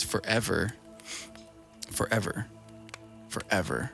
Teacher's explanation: you're hitting the emphasis on ever